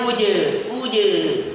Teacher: dia memiliki sifat syidah yang suaranya tertahan